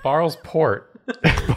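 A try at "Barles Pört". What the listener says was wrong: No, you have to say port. It with the accent.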